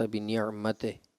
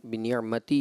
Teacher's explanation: लफ्ज़ी गलतियाँ आई हैं कुछ मकामात पर, जैसे एक आयत में इन्होंने पढ़ा मा अंत बिनिअमते, तो ये मते की जगह अगर हम बिनिअमती इसको करेंगे तो ये मारूफ़ तरीका हो जाएगा